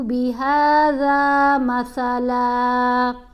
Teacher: ذال اور سا ان دونوں کو پڑھتے ہوئے آپ نے زبان کو دانتوں کے درمیان میں رکھنا ہے